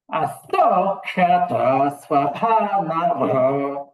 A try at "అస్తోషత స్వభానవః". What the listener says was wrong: అక్కడ దీర్ఘం వినబడుతున్నదండి. అస్తోషతస్వభానవో. తాత అక్కడ దీర్ఘం లేదు.